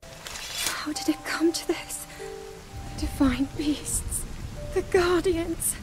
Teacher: has shown us that she basically has one tone and lacks intonation she consistently has a soft breathy voice